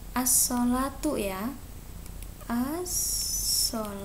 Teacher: alif lam bertemu dengan huruf idgham Syamsiyah yaitu huruf so maka alif lam nya tidak dibaca jelas tapi dimasukkan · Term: alif lam syamsiyah